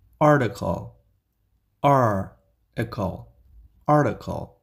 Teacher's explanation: this T is pronounced as D in the middle especially in American English